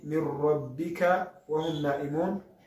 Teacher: Urumva yuko dusomye nun sakina yabanjirije inyuguti ya ra, tuyinjizamo ya nun ntiyumvikanye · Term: al-kamil bila ghunna